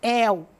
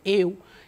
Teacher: Esse eu aí, essa vogal, ela é mais fechada. Em el, essa vogal é aberta. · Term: ditongos abertos